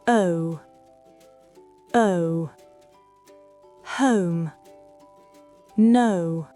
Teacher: Commencez très détendu, presque en « e ». Ensuite, arrondissez progressivement les lèvres vers « ou ». Le mouvement des lèvres est plus important que celui de la langue.